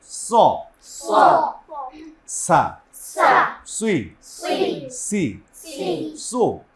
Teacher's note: জিবার আগা সামনের নিচের দাঁতের আগা অথবা গোড়া